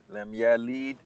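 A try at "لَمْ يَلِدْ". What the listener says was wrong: Lam yalid. Ah, these are short vowel.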